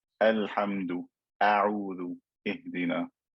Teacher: Hamza is one of the letters of istifal, so it's going to be skinny.